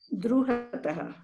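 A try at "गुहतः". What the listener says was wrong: It is not Dru, not Gru. It is Gu. You can see the word here.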